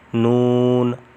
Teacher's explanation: بیچ میں واو والی جگہ پہ جہاں پہ آپ نے لمبا کرنا ہے اس کو، تو وہاں ناک سے آواز نہیں آنی چاہیے